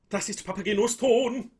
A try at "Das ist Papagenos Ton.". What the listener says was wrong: And if I were you, I'd get a bit more meh, meh, meh into that. A bit more frontal. Das ist Papagenos Ton. I would oh as much as you can. I think in German repertoire, guys, it's really important to do these nice closed O's.